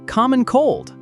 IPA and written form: ˌkɑː.mən ˈkoʊld (Common cold)